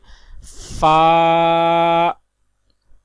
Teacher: فا کا مخرج ہے اوپر کے دانتوں کے کنارے اور نچلے ہونٹ کے تر حصے سے ادا ہوتا ہے